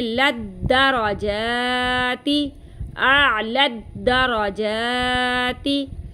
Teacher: लाम को दाल से मिलाएंगे